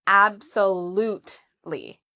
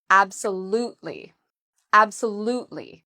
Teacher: So the stress is on the third syllable.